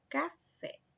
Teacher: Fé é a sílaba mais forte, certo? Portanto, fé é a sílaba tônica.